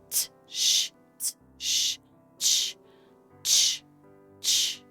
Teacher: Ch is actually a T and an SH sound put together.